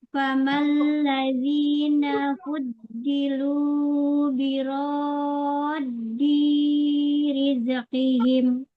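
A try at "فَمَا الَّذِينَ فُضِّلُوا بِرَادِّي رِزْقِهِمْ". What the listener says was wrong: I-nya kepanjangan Bunda mat tabi'inya. Famal ladzina fuddilu biraddi rizqihim.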